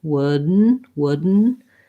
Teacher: um i might not say wood then with two clear syllables the second syllable is going to be mostly just a syllabic n sound wooden wooden and i'm going to kind of swallow this d